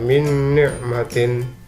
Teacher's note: Cara membacanya yaitu suara nun sukun dan tanwin dimasukkan ke dalam huruf sesudahnya, yaitu dengan didengungkan, ditekan, dan ditahan 2 harokat hingga suara nun sukun dan tanwinnya hilang · nun sukun dimasukkan ke dalam huruf nun yang depannya, jadi dibaca min ni'matin. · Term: idgham bi ghunah, idgham bi gunnah